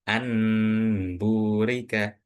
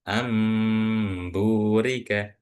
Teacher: Yaitu ee tanwinnya itu berubah menjadi mim. Nun mati ataupun tanwinnya itu bunyinya dirubah menjadi huruf mim. · nun sukun di sini kita bayangkan dia ini bukan huruf nun, tapi huruf mim. Jadi bukan anburika, bukan, tapi amburika. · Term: Iqlab